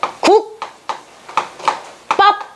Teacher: 지금 비읍이 쌍비읍으로 바뀌었어. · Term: 경음화